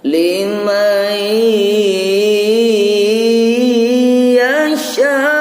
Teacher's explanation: Jadi nunnya tidak kelihatan, langsung masuk ke ya, ditahan dulu karena ini gunnah. · Nun sukun bertemu ya, nunnya enggak kelihatan, enggak terdengar suaranya, tapi yang terdengar langsung ke ya-nya. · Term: idgham bi gunnah